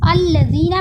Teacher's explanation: अल्लज़ीना में ज़ाल का मखरज ज़बान की नोक सामने के दो दांतों के किनारे से लगाकर अदा किया जा रहा है।